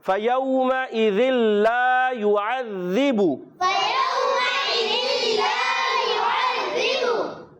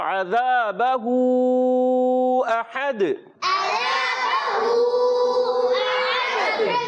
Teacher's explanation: عین کی ادائیگی حلق کے درمیان والے حصے سے. پھر ذال آیا، ذال بار بار آتا ہے، اس کو اچھے طریقے سے سمجھنا ہے.